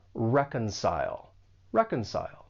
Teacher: For pronunciation, the verb has 3 syllables. The stress is on that first syllable, and keep in mind that the C has more of an S sound.